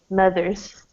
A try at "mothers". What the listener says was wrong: Yeah, so it's not so open.